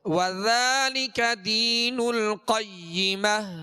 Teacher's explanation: القيمة وذالک ذال میں نرمی کے ساتھ ذال کو پڑھیں گے اس کے اوپر کھڑا زبر ہے جو الف مدہ کے قائم مقام ہے لہذا اس کو ایک الف کی مقدار میں کھینچ کر ادا کریں گے